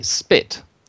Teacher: when we put an S in front and say spit, it's no longer aspirate. So it's spit.